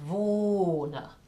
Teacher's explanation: the H that's following the O will prolong the vowel